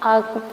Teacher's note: ये हमारे मुख के एकदम मध्य में रहेगा। ना पीछे रहेगा ना आगे रहेगा। इसलिए इसे मध्य कहते हैं। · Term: मध्य स्वर